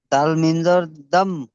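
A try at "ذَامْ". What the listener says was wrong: ওটা দাল নয়, এটা জাল পড়বেন, জাল। জাল মিম জাবার জাম, বিজাম,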